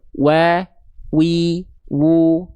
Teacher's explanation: Wa wi wu wa wa wa wi wi wi wi wi wuw wu. Jadi sebelum masuk ke bunyi vokal a i u-nya kalau dia berharakat itu monyong dulu dia